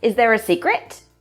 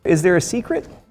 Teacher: the intonation rises at the end of the sentence and the last syllable sounds a bit higher and a bit louder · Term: yes/no questions